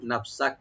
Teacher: ইল্লা নাফসাক, নাফসাক নুনটাকে ওপেন রাখবেন আর সিনটাকে ওপেন রাখবেন। কাফ এখানে যদি আমরা ওয়াকফ করি, কাফটাকে একটা হামস করব